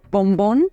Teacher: se llama oclusiva bilabial Sonora cerramos totalmente la boca al pronunciarla por eso es oclusiva